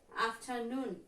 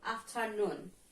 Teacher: Here we can see the stress in the last syllable.